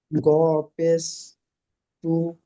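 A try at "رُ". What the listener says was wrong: র, র, র, এটা র আছে, র পেশ জু।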